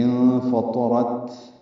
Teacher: ہلکی سی سانس کی آواز آخر میں جاری رہے گی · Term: ہمس